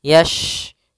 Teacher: Hati-hati jangan terbaca dengan huruf sin. Ya, shin makhrajnya adalah tengah lidah kita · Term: huruf shin